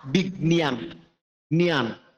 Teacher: নাসিক্য উচ্চারণ যেটা নাক দিয়ে হয়, নাকের দিয়ে বেরোবে হালকা পাতলা